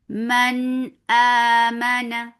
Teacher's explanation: ہم نون کو بالکل کلیئر کر کے پڑھ دیں گے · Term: اظہار